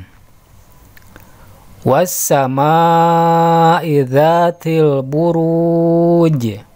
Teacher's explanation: alif lam menghadapi huruf Sin tandanya ada tasydid cara membacanya yaitu huruf lam di idghomkan ke dalam huruf Sin jadi ketika dibaca bunyi huruf lam nya tidak tampak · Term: alif lam syamsiyah